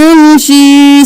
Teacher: मीम पर भी देर लगानी है और फिर या पर भी